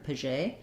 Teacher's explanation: it's probably Paget, with this being like a voiced sh sound, j, like in measure